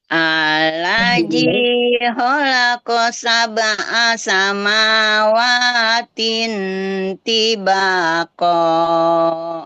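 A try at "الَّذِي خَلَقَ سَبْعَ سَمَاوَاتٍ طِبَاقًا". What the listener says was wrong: Masya Allah, sudah hafal. Alhamdulillah. Oke, Mumtaz.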